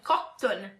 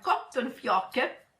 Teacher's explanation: stressiamo, accentiamo tanto la doppia T